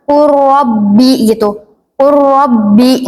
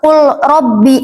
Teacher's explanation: Lam ketemu ro. Jadi langsung ke nyebutin huruf ro aja. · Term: idgham mutajanisen